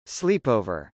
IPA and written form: slˈipˌoʊvɚ (sleepover)